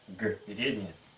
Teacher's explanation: Первая фонема, как в русском, Г, то есть слегка глухая, но взрывная. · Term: взрывная Г